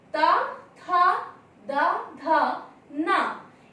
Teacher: क्योंकि जब हम ता, था, दा, धा, ना ये वर्ण बोलते हैं तो हमारे दंत आपस में मिलते हैं। उच्चारण के दौरान हमारे दंत आपस में मिलते हैं, इसलिए इसका उच्चारण स्थान होगा दंत।